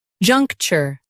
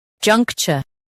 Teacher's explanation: In US, chur is soft. In UK, it's cha.